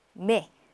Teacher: AI는 에 발음, 열린 에 발음이죠.